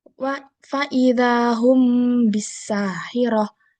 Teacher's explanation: dibaca samar di bibir dengan dengung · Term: ikhfa syafawi